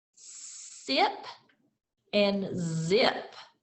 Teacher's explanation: both these consonant sounds are made by positioning the tongue close to the ridge right behind the teeth and pushing air out of your mouth